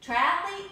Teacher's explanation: Triathlete is just three syllables, so there's no need to try to stick a vowel in there.